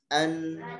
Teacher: Nah kemudian yang kedua an kalau disukunkan an itu ada gunnahnya